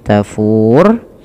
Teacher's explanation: Sukun arid itu sukun karena awalnya kan tafuru, gitu ya, tafuru. Kemudian karena waqaf menjadi tafur, yang dimana rohnya dimatikan